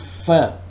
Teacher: when I produce the sound firm my upper teeth are touching the lower lip